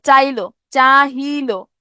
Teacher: ই ধ্বনিটা থেকে গেল, হ লোপ পাইলো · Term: হকার লোপ